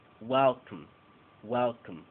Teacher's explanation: La sílaba tónica recibe toda la atención. Well. Y la sílaba átona, una schwa.